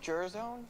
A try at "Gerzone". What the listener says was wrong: It's hard G. It's hard. It's a hard G for subtlety reasons.